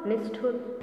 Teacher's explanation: यहाँ पर ट और ठ होने से मूर्धन्य श हो जाता है, मूर्धन्य श। निह युक्त ठुर, निष्ठुर।